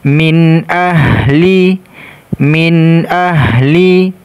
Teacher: huruf alif dibaca izhar dibaca jelas Min ahli Min ahli kemudian ha sukun makhrajnya Ha ini tenggorokan bagian bawah